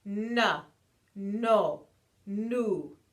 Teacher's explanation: you can feel the placement right behind your teeth on that hard Ridge